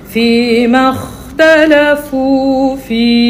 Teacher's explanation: Dia bunyi angin di hujung. Angin tu ialah sifat mahmusah ataupun hams.